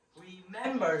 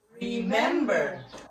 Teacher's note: so the stress word is in the second syllable